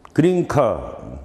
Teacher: 그러면 느 사운드가 발음 위치에 있어서 크와 유사해졌다. 유사해진 게 아니라 같아졌다 이거지. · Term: 어시뮬레이션